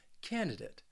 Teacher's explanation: this word has three syllables and the stress is on that first syllable